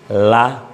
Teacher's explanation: La, bukan la, tapi la, lidahnya naik ke langit-langit untuk menempelkan ujung pinggir lidah ke langit-langit, mendapatkan makhrajnya lam